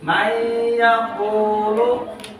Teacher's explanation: Huruf idgham yang 6 ini, maka diharuskan nun ini, suara n ini dimasukkan ke huruf ya. Dia disertai dengan tekanan. Biasanya dalam Al-Quran suka dikasih tasdid.